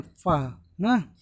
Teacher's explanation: ठीक है, सा बोल रहे हैं तो भी थोड़ा सा जीभ हमारी दांत से टकरा है, रा बोल रहे हैं तो भी तलुए के आगे भाग से टकरा रही है। लेकिन जब फा बोलते हैं तो फा देखो ओंठ आपस में क्या होते हैं, चिपक जाते हैं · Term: ओष्ठ ध्वनि